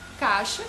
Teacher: o A ele é vogal e o I é semivogal, porque o som dele é pronunciado fraquinho, né? Tanto é que você pode nem pronunciar o I, caixa, e a palavra é compreendida do mesmo jeito, né?